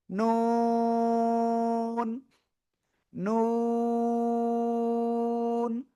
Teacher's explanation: জিহ্বার আগা তার বরাবর উপরে তালুর সাথে লাগাবেন, লাগিয়ে চার আলিফ টানে উচ্চারণ করবেন,